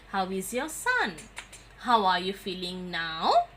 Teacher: So the rising tone shows politeness or friendliness.